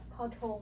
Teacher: makes an aspirated T sound like the T in tennis. As a final consonant, ทอธง makes a T stop.